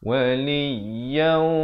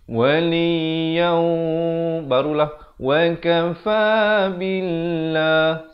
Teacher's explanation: Di sini tanwin bertemu waw idgham bi gunnah. Masukkan beserta dengung kadar panjang 2 harakat. Jangan tak cukup harakat.